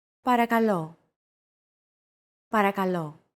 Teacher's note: make sure to stress that final syllable with the accent mark